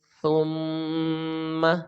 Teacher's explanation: سا کی آواز سیٹی کی طرح نہیں ہوگی، بغیر سیٹی کے ساتھ ہم اس کی آواز نرمی کے ساتھ پڑھیں گے. زبان کو ہم دانتوں کے اندرونی کنارے سے ہم لگا کر ہم اس کو پڑھیں گے.